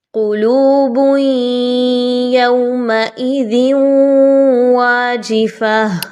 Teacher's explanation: آپ نے کیا کرنا ہے کہ ادغام مع الغنہ کرنا ہے. تنوین کی آواز کو یا کی آواز کے ساتھ ملائیے غنے کے ساتھ